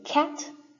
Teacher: don't feel any vibration down there it's because it's unvoiced um k is also an aspirated stop um so the pop of air comes out